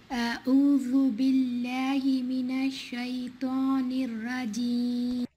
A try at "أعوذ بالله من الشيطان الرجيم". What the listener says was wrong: So أعوذ, the عين is taking the hamza sound. It's not عي, it's not أعوذ. It's أعوذ. أعوذ بالله من الشيطان الرجيم. And not رجيم. رجيم. رجيم. رجيم.